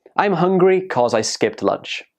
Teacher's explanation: when we're speaking quickly, we can shorten because to cause